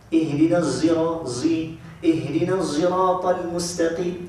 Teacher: Dia menyebut huruf sad bercampur dengan huruf zai. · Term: Huruf sad musyammatun bizai